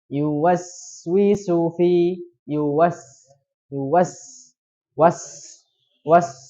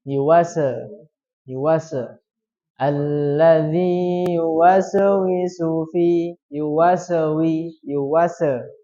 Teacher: menghilangkan sifat hamas pada huruf sin. Hamas itu apa? Mengalir. Ya, dengan udara yang banyak. Jadi harus dibacanya yuwaswisu fi yuwas was.